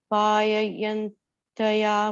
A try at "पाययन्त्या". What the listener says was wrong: third line la paya yentya, it's a half ta only, yentya, not yentaya.